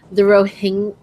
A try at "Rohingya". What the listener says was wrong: I don't think you pronounce the G. I'm pretty sure it's just Rohingya.